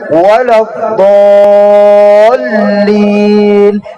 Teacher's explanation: Kesalahan ketiga, pada kalimat di ayat waladhdallin, masih banyak imam-imam rawatib membacanya waladhdallin, dinaikkan intonasi di lam tasdid